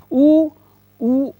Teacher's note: ओंठ का प्रयोग हो रहा है, ओंठ गोल हो जाता है।